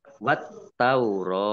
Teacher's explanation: alif lam syamsiah karena tidak dibaca langsung masuk ke ke huruf berikutnya yaitu ta